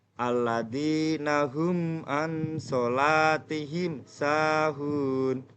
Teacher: Cara membacanya itu adalah dengan jelas di bibir dan mulut tertutup tanpa dipanjangkan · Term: idhar safawi